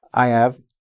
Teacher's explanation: I said: I have, but I dropped the h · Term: H deletion